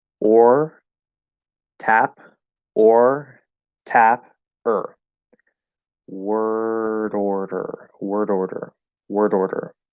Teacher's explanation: You have to do the R-colored O, reach up to try to tap the D, and then you're going to repeat that exact same motion. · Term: flap D